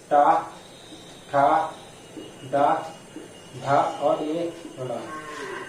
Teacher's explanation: जो टा वर्ग होता है इसका उच्चारण स्थान होता है मूर्धा। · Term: मूर्धन्य वर्ण